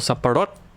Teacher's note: you need to speed it up and just emphasize the last syllable